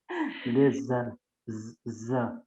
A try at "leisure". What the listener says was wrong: Not Z. Z is coming because when you're joining your tongue with your teeth, don't join your tongue with your teeth. Roll it inside and make it like this. Leisure. Join your tongue to the palate above. Leisure.